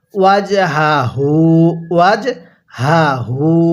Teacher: দোনোটা হাই উচ্চারণের সময় গলার মধ্যে আওয়াজ করে পড়ছি